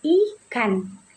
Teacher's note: Fonem I diucapkan dengan posisi lidah yang tinggi dan berada di depan